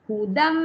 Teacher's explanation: kalau dah dengung tak boleh pendek kenalah minimum dua